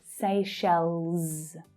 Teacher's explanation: And don't forget the plural /z/ sound at the end.